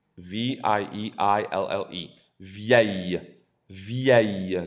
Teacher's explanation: There's no L. It's aïe.